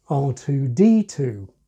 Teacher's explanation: has the main accent not on the final number, but on the letter before it, R2-D2. Why is this? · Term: deaccented